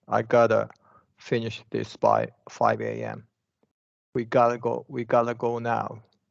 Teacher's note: flap T is sometimes used along with the schwa. So basically, it becomes the, right, instead of ta, but it's going to be shorter, the.